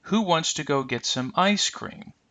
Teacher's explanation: the word ice will receive the focus because it's the stressed word of the two-part idea